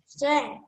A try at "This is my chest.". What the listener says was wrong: Again, how about the word this? You did not say it. Come on, say it. This is my chest.